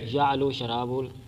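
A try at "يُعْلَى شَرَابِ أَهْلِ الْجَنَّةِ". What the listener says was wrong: شراب یعلو شرابو نہیں پڑھنا، یعلو شراب اہل الجنت، یعلو شراب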